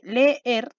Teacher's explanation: se juntan dos vocales exactamente iguales que son justamente las dos abiertas pero están separadas en sílabas distintas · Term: hiato